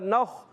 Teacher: نون خا زبر نخ، نون کو خا سے ملائیں، خا کو پر رکھنا ہے. خا عرف مستعلیہ میں سے پر رہے گا، موٹا رہے گا